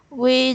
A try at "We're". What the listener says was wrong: But try to say we're, not just we. So this is we are, but it's a contraction. It's pronounced were. We're.